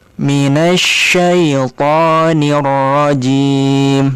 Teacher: huruf ro-nya dia harus direm. Jangan dibiarkan ro itu nanti terus bergetar sehingga memunculkan huruf ro yang banyak sehingga nanti dia masuk ke dalam kategori kesalahan ya. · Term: ro bertasydid